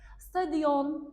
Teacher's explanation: İki saitin arasına y səsi artırılır səsdə. Deməli, bunlarda iki saitin arasına y artırılır, səs artırılıb baş verir.